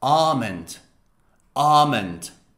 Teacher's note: the british pronunciation does not pronounce the l